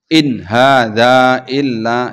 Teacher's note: sama-sama nun mati tapi ketemu izhar nggak boleh memanjang nggak boleh mendengung